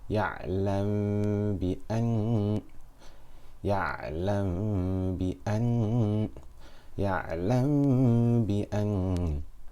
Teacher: I'm hiding the Mim between my lips with Ghunna for 2 harakat. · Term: Ikhfa Shafawi